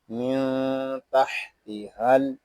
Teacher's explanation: ہا کو ہم لام کے ساتھ ملا دیں گے، یہاں الف جو ہے یہ نہیں پڑھا جا رہا ، لام ساکن ہے، اس کو سکون کے ساتھ ادا کریں